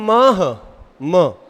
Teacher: ये नाक और ओष्ठ दोनों के सहारे से ही बोला जाएगा। बिना एक से नहीं बोला जाएगा। अगर आप न बोल रहे